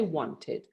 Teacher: most americans would say wanted you don't even hear the t